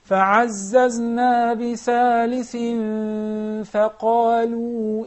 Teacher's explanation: we'll conceal the nun, but The ghunna is there. 2 harakas, 2 counts. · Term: ikhfa haqiqi